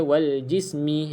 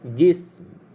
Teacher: Okey, bunyi wal jism. Caranya lepas kita sebut jis, kita tutup mulut rapat, bibir atas bibir bawah, barulah dia bunyi ada huruf mim. Tapi kita tak bunyikan baris dia wal jismi. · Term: huruf yang sukun